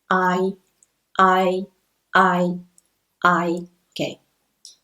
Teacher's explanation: when you pronounce the diphthongs in English we start from the first final and slide to the second one well the stress is on the first one